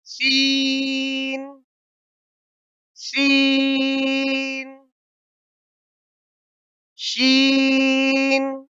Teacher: اس میں سیٹی کی آواز نکلنی چاہیے. جس طرح سے ہم سیٹی مارتے ہیں اس طرح سے سیٹی کی آواز نکلنی چاہیے.